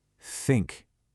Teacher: For a word like think, you just blow air. Think. No voice.